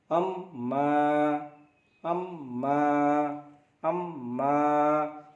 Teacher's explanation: मा दोनों होठों के सूखा भाग से उच्चारण होता है